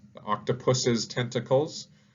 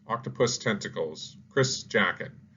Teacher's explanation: Some people add in an extra syllable. They say an extra S, the octopus's tentacles, and some people don't.